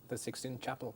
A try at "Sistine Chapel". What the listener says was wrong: 16 no, 16 no, Sistine. Con S, dos S, Sistine Chapel.